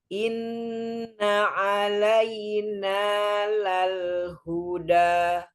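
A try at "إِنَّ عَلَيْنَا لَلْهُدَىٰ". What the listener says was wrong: Masya Allah, betul. Seperti itu ya, lanjut.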